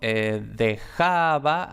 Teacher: es aproximante porque va entre dos vocales, aunque sean dos palabras diferentes. La J la transcribimos como X y luego este va de dejaba va entre dos vocales, por tanto es aproximante.